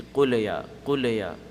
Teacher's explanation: There's no qalqala, there's no double sound in the lam. It's just qul and then ya.